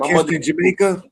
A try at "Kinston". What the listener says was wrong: No, fool. Kinston. It ain't no G in there.